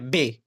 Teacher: 2 लबी इन दोनों होठों से हवा को रोका जाता है।